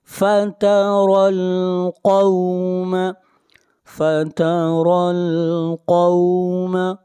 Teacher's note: قاف کو موٹا پڑھیں گے، قاف حروف مستعلیہ میں سے ہے